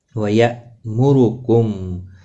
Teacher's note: حمزہ ساکن کو تھوڑا جھٹکے کے ساتھ پڑھیں گے۔